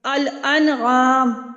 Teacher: نون ساکن کے بعد عین آ گیا ہے تو وہ بھی حروف حلقی میں سے ہیں، نون کو ظاہر کر کے پڑھا جا رہا ہے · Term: اظہار حلقی